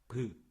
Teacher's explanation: 이제 밑에 나오는데 비읍 같은 경우는 소리를 낼 때 브 이렇게 돼요. 그러면 나오다가 어디서 막혀요? 입술에서 막히는 거예요